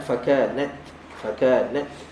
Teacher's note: adalah kita jarayan nafas kita keluarkan nafas ataupun keluarkan angin OK kita keluarkan angin ketika lidah kita berada dekat makhraj Ta jangan larikan dia daripada makh sebab bila lari dia akan keluar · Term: hams